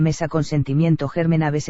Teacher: Ejemplos: palabras graves sin tilde: mesa, consentimiento, germen, aves. Estas palabras son graves porque la mayor fuerza de voz se presenta en la penúltima sílaba.